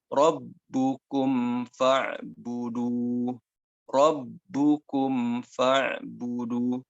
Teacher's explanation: Mim dan fa ini hampir satu makhraj. Hampir ya, berdekatan makhrajnya. Kalau mim dengan bibir dengan bibir, kalau fa itu bibir dengan gigi pangkal dengan ujung gigi atas. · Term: mim sukun dengan fa